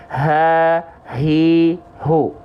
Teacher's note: Kalau H besar, dia kalau keluar dari pangkal tenggorokan, nafas yang keluar karakteristiknya biasa.